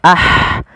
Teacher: Pada lafal ha sukun ada sifat hamusnya